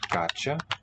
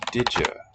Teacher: Maybe that's a fusion. Ya is just an enclitic that has special palatalized behavior.